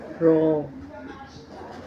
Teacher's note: ज़बान की नोक को हरकत देते हुए तालू से लगाकर अदा होता है रो